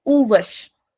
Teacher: I'm extending the sound of u and I'm shortening the sound of vash. Uvash. तो ये वाश नहीं है, वश है.